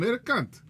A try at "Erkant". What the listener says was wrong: English. H, not K.